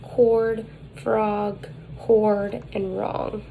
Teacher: height is low mid advancement is back the lips are rounded and it is tense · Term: open o, open O